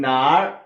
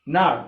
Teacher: if it's with the third tone 哪, which means asking question where. Okay, and if it's with the fourth tone 哪, which means answer there.